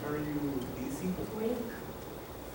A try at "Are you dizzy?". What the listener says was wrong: Are you dizzy? Not daisy, but dizzy.